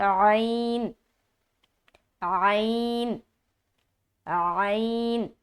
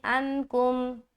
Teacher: عین جو ہے وسط حلق سے نکلے گا، یعنی حلق کا جو درمیانی حصہ ہے وہاں سے عین ادا ہوتا ہے